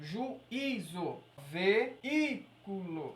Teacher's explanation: a minha sílaba tônica tem que ser o i sozinho. Porque é isso que caracteriza ele ser o hiato.